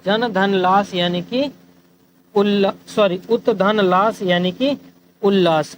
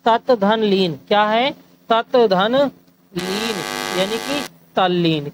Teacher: ता और दा के साथ जब ला का मिलन होता है तो ता और दा की जगह ला बन जाता है